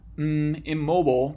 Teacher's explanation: with one of these sounds where you close your lips then the place of articulation of an n changes from what we call alveolar at the alveolar ridge to bilabial which means with two lips so you move the end forward to an m immobile to